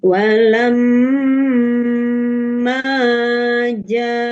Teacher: Karena mad thaobi'i bertemu hamzah dalam satu kalimat. Panjangnya lima harakat. Ini wajib lima harakat ee Bapak Ibu ya. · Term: mad wajib muttasil